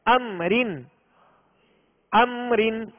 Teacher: اب میم ساکن کے بعد ان دو حروف حرف میم حرف با کے علاوہ کوئی بھی حرف آ جائے تو وہاں اظہار شفوی ہوگا، یعنی بغیر غننے کے ادا کریں گے